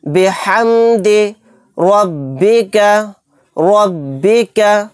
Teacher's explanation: یہاں پر ہا کو اچھے سے حلق سے نکال کے ادا کرنا ہے۔